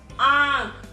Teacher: नाक और मुंह दोनों से निकाला जा रहा है स्वर